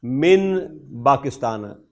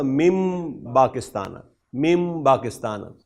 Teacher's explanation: جب نون ساکن ہو اور اس کے بعد آنے والا حرف با ہو تو یہ ان کے درمیان ادغام ہوتا ہے، تو یہ میم کی آواز آتی ہے